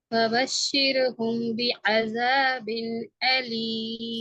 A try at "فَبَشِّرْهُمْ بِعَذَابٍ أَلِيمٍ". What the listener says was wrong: சிறுஹும் என்று வாரது பல தபஷிருஹும் அல்ல தபஷிர்ஹும்.